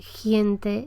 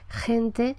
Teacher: esta pronunciación palatal, esta que parece «giente» en lugar de «gente»